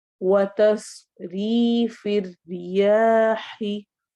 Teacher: वाव में होंठ गोल होंगे, तस स्क्वाट को मोटा करना है, री या मद्दा होगा, रॉ बारीक रहेगी, फिर रियाही रॉ बारीक होगी, या ही रूफ हलकी में से है।